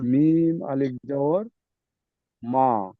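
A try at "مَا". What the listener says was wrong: একটু টান দেন, একালিফ পরিমাণ টান হবে।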